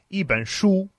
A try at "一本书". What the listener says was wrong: I would say that the oo sound, you had it a little bit more front of your mouth, like shu, shu, shu, back of the throat.